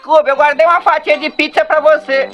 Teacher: fez algo como um mix da prosódia nordestina só que com leve R retroflex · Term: R retroflexo